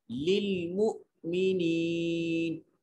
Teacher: मु हमजा को झटके से अदा करेंगे और या साकिन है माक़बल मकसूर या मद्दा होगा, एक अलिफ के बराबर लंबा करेंगे और वक्फ की हालत में नून पढ़ा जाएगा, नून की हरकत को नहीं अदा किया जाएगा।